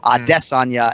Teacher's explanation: He's emphasizing that second syllable, Adesanya, and not Adesanya, the third one.